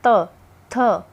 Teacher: ऊपर के दांतों को जीभ लगती है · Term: दंत्य